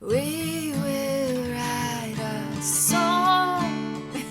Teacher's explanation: There are different things like iambic pentameter. It's like 5 syllables with emphasis on every other syllable.